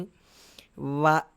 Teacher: తర్వాత దంత, ఓష్ఠ వీటిని కలిపి పలికేది వ. అంటే కింద పెదాన్ని పళ్ళకి తగిలించి పలికేటువంటిది, పై పెదానికి తగిలించం.